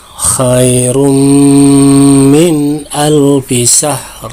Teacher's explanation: domah tain bertemu huruf mim. Nah, ini dibaca gunnah, ya. Jadi dimasukkan dulu 2 harakat dengan dengung